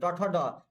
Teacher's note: तो देखिए ट ठ ड, ये सभी के सभी मूर्धा से बोला जाता है।